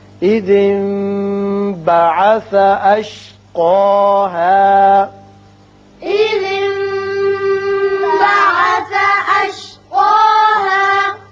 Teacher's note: یہاں نون ساکن کے بعد با آ رہا ہے، یہاں اقلاب ہوگا.